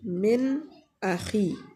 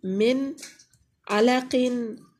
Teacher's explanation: उसमें हम ना गुन्ना करेंगे और ना ही छुपाएंगे और ना ही उसको किसी चीज़ पे बदलेंगे, बल्कि नून बज़ाहिर पढ़ेंगे। इसी को इजहार कहा जाता है।